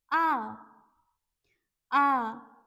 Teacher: Okay, so first we have is A, and the pronunciation is ah, ah. A in French is little open, means you really need to open your mouth little wide if you want to pronounce it correctly.